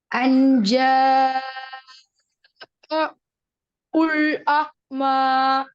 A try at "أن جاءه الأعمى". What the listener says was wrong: இப்ப ஹுல் வருது. ஆக்கு போக கூடாது. இந்த ஏட சவுண்ட், இந்த ஏட சவுண்ட். இத ஹூவா உச்சரிங்க. மாத்த வேணும்.